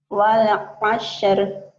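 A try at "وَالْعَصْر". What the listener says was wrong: sod aja. Wal asr, sod. Wal asr dihentikan jadi wal asri dihentikan jadi wal asr ya. wal asr. Coba wal asr.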